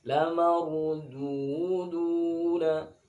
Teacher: Ini du dibaca seukuran satu alif dan bunyinya ke u. · ra sukun didahului harakat fathah itu dibaca tafkhim